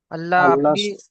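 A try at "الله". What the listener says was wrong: আপনি আল্লাহ কুর করে পড়েছেন তাই নয় কেন পুর হবে এখানে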